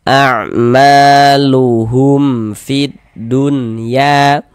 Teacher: ma dibaca panjang, mad tabi'i panjang 2 harokat